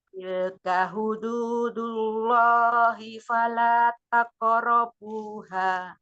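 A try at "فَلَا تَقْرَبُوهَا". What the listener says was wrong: Fala taqrabuha. Rohnya pendek, hanya 2 harakat.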